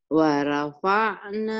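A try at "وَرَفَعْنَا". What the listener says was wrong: waro. Waro bukan wara.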